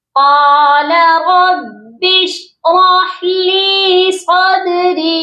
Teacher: لام کے ساتھ جائے مدہ ہے، اس کو بھی ہم نے ایک الف کے برابر لمبا کر کے پڑھنا ہے